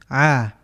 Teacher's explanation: Contoh dalam huruf hamzah keluar dari tenggorokan bagian bawah, dari aqsal halqi. A, ain keluar dari tenggorokan bagian tengah, wasatul halqi.